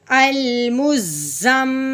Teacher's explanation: شادہ آ گئی، میم اور نون پہ شادہ ہے تو میم اور نون پہ غنہ کرتے ہیں